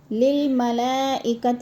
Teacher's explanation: ملا میں مد متصل ہے، 4 الفی مد ہے، 4 حرکات کے برابر ہم نے اس کو لمبا کرنا ہے